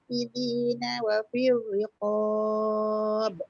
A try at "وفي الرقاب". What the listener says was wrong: Nipis sikit lagi. Wa fir riqab. Wa firri.